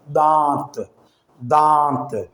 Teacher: ناک میں سے آواز نکال کر آپ نون کو ظاہر کریں گے، اور دانت، دانت تو یوں نون کو ظاہر کر کے نہیں پڑھنا۔ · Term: نون غنہ